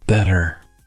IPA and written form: ˈbɛɾər (better)